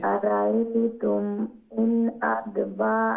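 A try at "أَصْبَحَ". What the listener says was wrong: আমি ওইটাও বলছি আসবাহা আলিফ সাদ আসবাহা দাদ না ওইটা আদ না একটা সাদ আসবাহা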